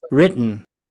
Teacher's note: The standard way is written. But you may hear written to the nose.